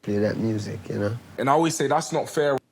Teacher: that's called TH stopping. It's when you turn a TH sound into a D or T sound.